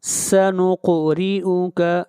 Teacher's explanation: قاف کو اوپر قلقلہ کریں گے، قاف کو موٹا پڑھیں گے